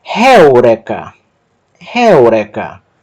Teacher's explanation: Sílaba tônica indicada pelo acento é o próprio ditongo. · tem uma aspiração forte que vai alterar a pronúncia do ditongo el para réu